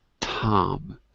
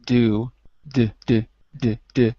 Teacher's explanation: you just touch the alveolar ridge. With do and door, you have to use your vocal cords a little bit.